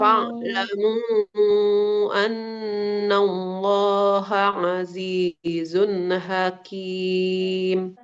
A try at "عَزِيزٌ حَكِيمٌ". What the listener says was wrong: Hakim. Di tengah tenggorokan. Ha. jadi lebih mirip ke ha yang biasa yang dipangkal. Hakim. Nah, itu yang ha bulat nanti jadi.